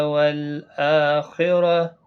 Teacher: والآخرہ حمزہ کے اوپر کھڑی زبر ہے، ایک الف کی مقدار کے برابر کھینچیں گے۔ خا مستعلیہ میں سے ہے، پر پڑا جائے گا، را پر پڑا جائے گا زبر کی وجہ سے، اور گولتا ہا ساکن بن جائے گا وقف کی صورت میں، کیونکہ یہاں پر وقف مطلق ہے۔